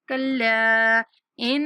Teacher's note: کلا کے اوپر جو مد ہے 3 سیکنڈ تک لمبا کریں گے